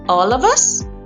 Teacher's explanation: The main stress is on all but the pitch continues to rise through the tail of us even though us isn't accented is the highest pitch at the end. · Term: rising tone